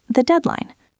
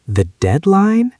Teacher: The intonation should be flat or slightly falling, indicating deep thought.